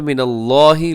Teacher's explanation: لفظ اللہ کو پر پڑھیے گا کیونکہ اس سے پہلے زبر ہے